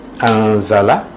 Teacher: So di sini kita jumpai huruf nun mati, nun sakinah bertemu dengan huruf zai, ia adalah ikhfa, kita baca samar nun itu.